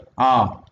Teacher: it is a back vowel, it is an open vowel and it is an unrounded vowel